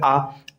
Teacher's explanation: पे मतलब जब आप सॉरी जेवा की ऊंचाई के आधार पे विवृत मतलब मुख पूरा खुलेगा